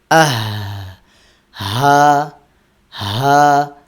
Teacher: আমরা কণ্ঠনালীর একেবারে নিচের অংশ থেকে ভোকাল কোর্সের এরিয়া থেকে উচ্চারণ করব